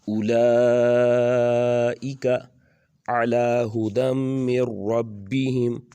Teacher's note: لام کے اوپر کھڑی زبر بھی ہے، ساتھ اوپر مد بھی ہے، تو اس کو زیادہ لمبا کر کے پڑھیں گے